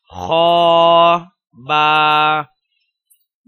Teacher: یا تا نون، سا سا نون، سا سا نون، جیم جیم، حا حا، خا خا، حا سا حا سا، خا با خا با، خا کو پر کر کے موٹی آواز کے ساتھ ادا کیا جائے گا